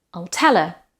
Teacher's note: No H in her